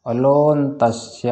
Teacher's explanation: लो में जो ओ है ना, वो दीर्घ है, और अ जो है ह्रस्व है।